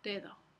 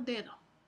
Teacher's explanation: se puede notar que la primera D es oclusiva y la segunda D es fricativa